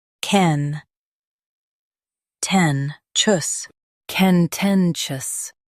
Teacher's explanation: Stress ten and keep chus light.